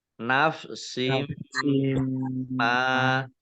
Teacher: Nafsim ma kasroh tanwin bertemu dengan huruf mim, bacaan idgham bi gunnah. Idgham masuk bi dengan gunnah mendengung.